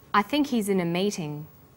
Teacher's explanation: the word think is stressed in this sentence and his is unstressed when these words are linked the her is dropped in spoken